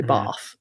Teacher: in southern England some words like bath have that long a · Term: trap bath split